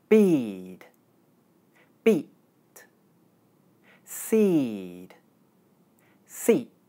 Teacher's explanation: in practice, the sound E is compressed whenever it's followed by an unvoiced consonant sound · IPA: /iː/